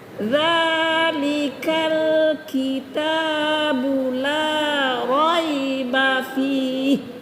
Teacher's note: Jadi kalau zal itu lembut, kan dia baca za di ujung lidah ya.